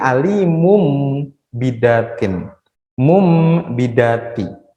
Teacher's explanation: Jadi nunnya di tanwin itu dia hilang menjadi huruf mim. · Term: iklab